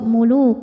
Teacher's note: yang menghadapi huruf wau maka tanwin ini dimasukkan ke wau muluau sambil ditahan didengungkan sampai ada suara masuk hidung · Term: idgham bhunah